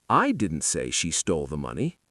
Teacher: Stress on I suggests someone else did, like Jim. I didn't say she stole the money.